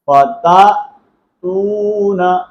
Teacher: اب دیکھیں یہ حمزہ ہے، حمزہ کو ہم جھٹکے کے ساتھ پڑھیں گے، اور یہ واو مدہ ہے، واو مدہ کو ایک الف کی مقدار کے اندر کھینچیں گے، فتأتون۔ اکثر اب آپ جو مسٹیک کر رہے ہوتے ہیں فتاتون، تو یہ بہت بڑی غلطی ہے، یہ آپ نے نہیں کرنی، حمزہ ہے، حمزے کو جھٹکے کے ساتھ پڑھتے ہیں، فتأتون افواجا۔